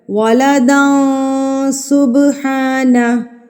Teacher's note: ولدا سبحانہ، داں پہ ہم نے اکفا کرنا ہے، ناک میں آواز کو ناک میں چھپانا ہے. تنوین کی جو آواز ہے اس کو آپ نے ناک میں چھپا لینا ہے ایک حرکت کے برابر